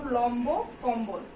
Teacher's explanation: ম ব্যঞ্জনের সাথে বফলা যুক্ত হলে বয়ের উচ্চারণ অবিকৃত থাকে